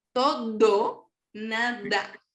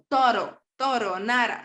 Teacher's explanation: A veces pronuncian la D como una R, como una R, pero suave